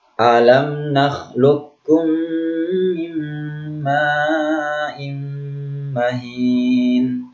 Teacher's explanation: di sini qaf sukun dengan kaf. Makhrajnya sama ya, makhrajnya berdekatan ya.